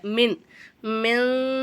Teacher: குன்னா செஞ்சு ஓதுறனால நான் சொல்லக்கூடிய அந்த மின் அப்படிங்கிற வார்த்தை உங்களுக்கு மண் அப்படின்னு கேட்குது